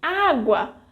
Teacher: In água, we have a ditongo because of the combination of the vogais U and A, also in the final syllable